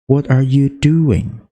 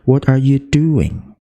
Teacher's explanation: Jadi, di do itu ditekan.